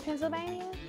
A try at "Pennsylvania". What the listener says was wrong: It's Pennsylvania. It's not Bania, it's Pennsylvania.